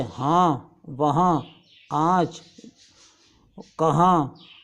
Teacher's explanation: वो नून साकिन है जो साफ़ अदा ना हो बल्कि नाक के गुनगुनाने से अदा हो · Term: नून गुन्ना